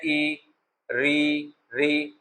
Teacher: तो ई में अगला जो जीभ का अगला भाग है वो प्रभावी हो जाता है